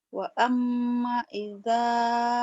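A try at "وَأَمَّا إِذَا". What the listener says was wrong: Wa amma panjang.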